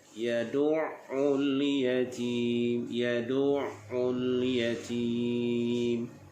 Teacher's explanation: Di sini kita tekankan huruf ain tetapi tidak sampai bunyi qalqalah.